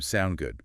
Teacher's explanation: Or the short form, sound good. Again, with that upward inflection.